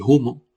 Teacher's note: restos de aspiración de la F inicial latina